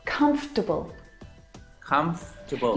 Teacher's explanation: this word just like vegetable has an extra vowel in there that we don't need to pronounce